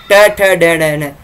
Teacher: जीभ हल्की सी राउंड हो के ऊपर की ओर मूर्धा पे टच होती है। · त में जब आप उच्चारण करेंगे त वर्ग का, त थ द ध न, तो जीवा जो है वह आपके दांतों को स्पर्श कर रही है, और दांतों को स्पर्श कर रही है, इसलिए इसका स्थान क्या हो गया, दंत हो गया। ट ठ ड न, जीभ हल्की सी राउंड होकर के ऊपर की ओर मूर्धा पे टच होती है, इसलिए मूर्धन्य।